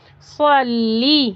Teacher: صاد کو موٹا کر کے پڑھیں گے، ایسے اوپر کی طرف زبان جائے گی۔